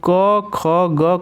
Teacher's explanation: कंठ पर जोर महसूस हो रहा है जोर पढ़ रहा है इसका मतलब के ख जी कंठ से उच्चरित होते हैं यानी इनका उच्चारण स्थान कंठ है